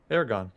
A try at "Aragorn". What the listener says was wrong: No, not Aragon. Aragorn. It is so not Aragon, though. Aragorn. Like, there's an R in there.